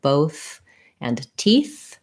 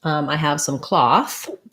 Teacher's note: And then also in cloth, we have the voiceless TH sound. So this is the same sound in words like both and teeth.